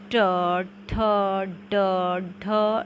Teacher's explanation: जिन व्यंजनों के उच्चारण में जीभ की नोक मूर्ध को छूती है उन व्यंजनों को हम मूर्धन्य व्यंजन कहते हैं।